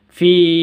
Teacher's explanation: Ya Sukun sebelum Ya Sukun itu ada kasrah jadi cara bacanya itu dibaca panjang dua harakat